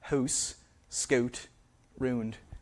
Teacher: So in Canadian raising, that diphthong, that ow sound, is raised to something more like ooh